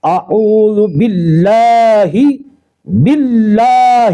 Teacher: باللہ کے لام کو باریک کرنا ہے اور لفظ اللہ کے لام کو ایک الف کے برابر کھینچنا ہے، اس میں حرف مد الف ہے۔